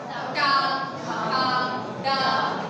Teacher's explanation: हमारी टंग क्या है, मुड़ रही है, जबकि चाछा में टंग हमारी मुड़ नहीं रही थी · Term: टा वर्ग